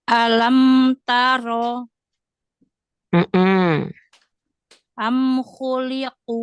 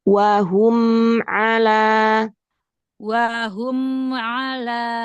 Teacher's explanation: Jadi ketika kita melafazkannya, berikan sifat bainiyah pada mim sukun. Karena di sini mim sukun bertemu dengan huruf selain mim dan ba, itu masuknya ke izhar. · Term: izhar syafawi